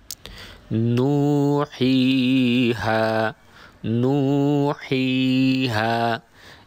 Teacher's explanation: এই অক্ষরগুলো উচ্চারণের সময় মুখ ও কণ্ঠনালীর কোনো অংশের সাথে অপর কোনো অংশের স্পর্শ হয়নি, শুধুমাত্র বাতাসের সাথে উচ্চারিত হচ্ছে। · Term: মদের অক্ষর